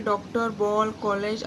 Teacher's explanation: आ का प्रयोग अंग्रेजी भाषा की ध्वनि को लिखने में किया जाता है। यह आ तथा ओ के बीच की ध्वनि है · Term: आगत ध्वनि